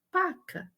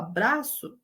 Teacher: haverá redução do encontro consonatal